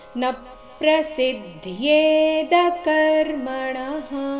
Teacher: ನ ಮೇಲೆ ಆಘಾತ, ಮುಂದೆ ಪ್ರ ಸಂಯುಕ್ತಾಕ್ಷರ ಇದ್ದ ಕಾರಣ